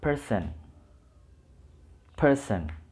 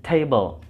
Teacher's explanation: Person. Penekanan di suku kata pertama.